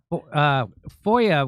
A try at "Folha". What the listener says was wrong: No, it's Folha. It's with an L.